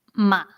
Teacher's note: Okay, so you see, it's this one took a little bit longer, right? So it's like a deeper tone, and it's also rising again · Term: third tone